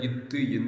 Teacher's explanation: மேல்வாய் பல்லினது அடியை நாக்கின் நுனி பொருந்துவதால் வருது